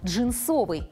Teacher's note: Если следовать строгой литературной норме, то рекомендуется произносить данное слово с ударной гласной «о» второго слога